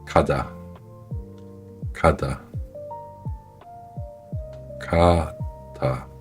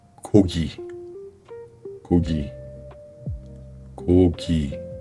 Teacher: Léger, sans souffle, sans tension. La langue remonte vers l'arrière du palais et se relâche doucement. Pas d'énergie excessive, juste un son neutre. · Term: Kyok